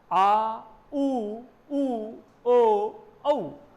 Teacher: तो इसमें जिह्वा, हमें ये थोड़ा सा महसूस होता है कि मुख के पीछे से ध्वनि आ रही है, अर्थात जिह्वा का पश्च भाग सक्रिय है। और अब मध्य स्वर की बात करें तो मध्य स्वर है अ, जिसमें जिह्वा के दोनों बीच के किनारे सक्रिय हो जाते हैं। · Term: पश्च स्वर